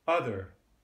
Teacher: when the R is on there as in my own speech that's called a rhotic accent